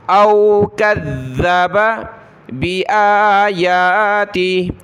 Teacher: ذال کے اوپر یہ تشدید ہے تو سختی کے ساتھ پڑھنا ہے ذال کو، پلس میں زبان بھی نکالنی ہے